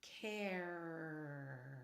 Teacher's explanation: What I am doing is hanging on the R. So I'm saying care instead of care, and then just finishing the word off with the R.